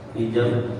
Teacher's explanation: Karena di akhir kalimat ya, berubah menjadi mad alif sukun. Hijab dan qalqalahnya tetap harus dipantulkan